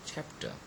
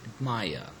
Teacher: we have stressed the first syllable in the word chapter and the second syllable in the word admire